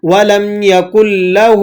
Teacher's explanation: وَلَمْ يَكُنْ لَهُ ہا الٹا پیش ہو ہے، تو یہاں پر کیونکہ کھڑا زبر کھڑی زیر الٹے پیش کو ایک الف کے برابر کھینچ کر پڑھا جاتا ہے، تو ہا الٹا پیش ہو کو آپ ایک الف کے برابر کھینچ کر پڑھیں گے